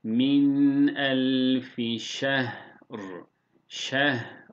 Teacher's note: Yine ra'yı kalın telaffuz ediyoruz vakıf halinde.